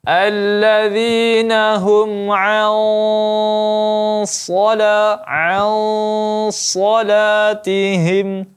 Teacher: Karena apa? Karena nun mati bertemu huruf isti'la atau huruf tebal, yakni huruf shad, maka dengungnya juga ikut tebal. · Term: ikhfa hakiki